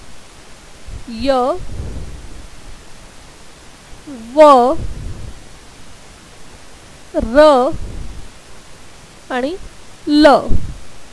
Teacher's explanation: ज्या वर्णांचा उच्चार करत असताना उच्चारण स्थानांना जिभेचे भाग पूर्ण भिडत नाहीत त्या वर्णांना अंतस्थ अर्धस्वर असे म्हणतात.